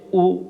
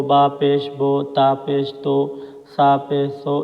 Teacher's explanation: تو ایسے اس طرح کے گول نشان کو ہم پیش کہتے ہیں، اور پیش کی آواز معروف ہوتی ہے، مجہول نہیں ہوتی، اور اسی طرح پیش کی آواز آگے کو جاتی ہے اور ہونٹ گول ہوتے ہیں۔